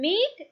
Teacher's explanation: it can also be described as a front, close, unrounded vowel